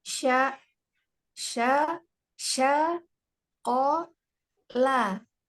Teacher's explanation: Jangan ada y-nya syia. Tapi sya.